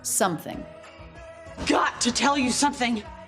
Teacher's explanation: the word something is stressed but any stressed word only has one stressed syllable so thing still unstressed